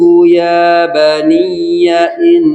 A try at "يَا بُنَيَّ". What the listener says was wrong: يا بني maaf ya baniya ya tasdid di situ ada sedikit nabar. Ya baniya